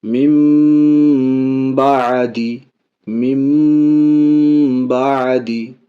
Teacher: نون ساکن کے بعد با، اس لیے نون کو میم سے بدل کے اقلاب اس کو کہتے ہیں